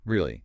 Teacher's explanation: If your voice goes up, >> really, you're showing surprise or asking,